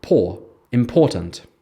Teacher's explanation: in the word important, the stress is on the second syllable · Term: word stress, Word stress